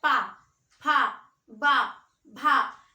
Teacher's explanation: और होठ जैसे आप ओ बोलेंगे उसी तरह से आप पा बोलेंगे, ओ तो स्वर हो गया, पा बोलेंगे तो पा में दोनों ओठ मिलते हैं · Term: ओष्ठ